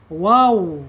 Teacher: Makhrajnya ada di dua bibir ya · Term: Wawu asyafatain